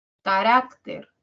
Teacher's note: rac tiene mayor intensidad que k y ter y por lo tanto es la tónica